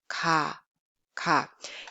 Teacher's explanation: It's pronounced when the back of your tongue touching a soft palate. 가. It has a sound value of English more like a case sound, Basically voiceless sound with no aspiration and tenseness. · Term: plain sound